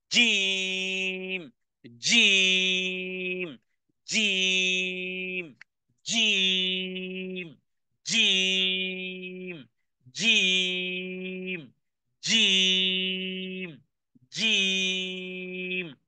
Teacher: জিহ্বার মধ্যখান এবং তার বরাবর উপরে তালুর সঙ্গে লাগিয়ে 6 হারাকা পরিমাণ টানতে হবে। এই ক্ষেত্রে মনে রাখতে হবে আওয়াজ হবে পাথরের মতন কঠিন, ধাক্কা দিতে হবে কঠিন ভাবে, জিহ্বাটাকে বলতে হবে জিম, জিম, জিম, জিম, জিম, জিম, জিম, জিম। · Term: জিমের উচ্চারণ